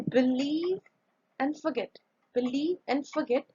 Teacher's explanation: believe and forget the first syllable is not stressed here